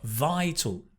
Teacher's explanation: Stress on the “vi”